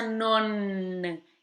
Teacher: E tem essa pronúncia non, esse N termina lá em cima do céu da boca.